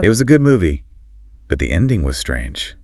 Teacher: Fall. Rise for nuance, then falling statement.